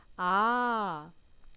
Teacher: ए बोलोगे तो मुंह पूरा खुल रहा है ओपन हो रहा है